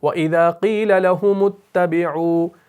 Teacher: لکھا تو جاتا ہے, یہ حمزۃ الوصل ہو جاتا ہے, یعنی وصل کی صورت میں اس کو پڑھا نہیں جاتا